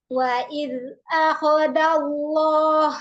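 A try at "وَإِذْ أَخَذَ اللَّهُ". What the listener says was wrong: Oke, sekarang benar. Tadi kurang rohawah zal nih sukunnya. Bacanya tadi wa iz akhadallah. Jadi nggak rohawah. Ya, terputus banget.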